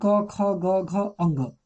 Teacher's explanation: कवर्ग, कवर्ग का उच्चारण स्थान क्या है? कंठ है। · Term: कंठ ध्वनि